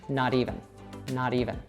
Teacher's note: So they'd say not even, but again here we have a T between two vowels. So what an American would do is transform that into that soft D sound.